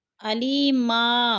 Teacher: یا مدہ کو ہم نے ایک الف دو حرکات کے برابر کھینچ کر پڑھنا ہے